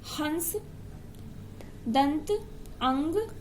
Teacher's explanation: अनुस्वार का प्रयोग तब करना चाहिए जब उच्चारण में न वर्ण स्पष्ट सुनाई दे तथा उच्चारण करते समय ध्वनि केवल नाक से निकलती है। इसमें उच्चारण करते समय ध्वनि केवल नाक से निकलती है